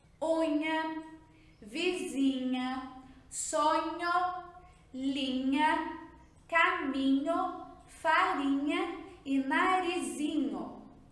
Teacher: se vocês tamparem o nariz, vocês vão sentir uma pressão no nariz. Quer dizer que o som sai pelo nariz, é um som nasalizado. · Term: dígrafo NH